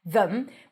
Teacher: When it's unstressed, you can either pronounce it as them, no vowel. It's a schwa. It's reduced. The e is reduced to a schwa.